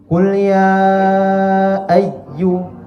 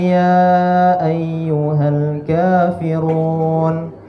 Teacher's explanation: ketika kita bertemu ya tasdid jangan kita luruskan kita tekan